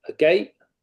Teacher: And so for all these instances, and you get estuary English, where we say a word that ends in a T, a gate, the T isn't sounded in gate, that is still, it may effectively be a glottal stop, but it's an allophone of T.